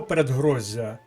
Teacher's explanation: кінцевий кореневий з знаходиться між двома голосними і він пом'якшений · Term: подовження